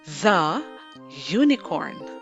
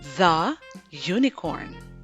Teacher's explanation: The word unicorn begins with a vowel, but has a consonant sound Y. So we say the unicorn.